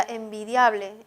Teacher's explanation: esa I de dia casi no suena, suena más la A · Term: diptongo